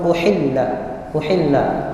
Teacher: Huruf hamzah dan huruf ha ini berdekatan, sama-sama huruf tenggorokan. Hamzah tenggorokan paling bawah, ha tenggorokannya di tengah, berdekatan.